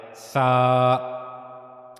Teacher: زبان کی نوک کا اوپری سرا، اوپری حصہ، یہ جو زبان کی نوک کا اوپر والا حصہ ہے یہ اوپر کے 2 اگلے دانتوں کے کناروں کے ساتھ جا کر ملتا ہے تو پھر سا ادا ہوتا ہے، سا۔